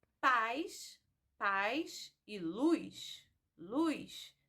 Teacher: nós pronunciamos algumas palavras como se elas tivessem o I na última sílaba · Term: ditongação